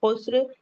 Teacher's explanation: سین پہ بھی ہمس کا فائدہ ہو رہا ہے اور رو پہ وقف کریں گے تو رو کو ہیوی پڑھیں گے، خسر۔